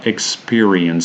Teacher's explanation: the stress falls in the second syllable so experiences the e sound is stressed and the first syllable